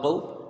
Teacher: قاف با زبر قو، یہاں واو لین ہے، حروف مدہ سے اس کی مقدار کو کچھ کم رکھیں گے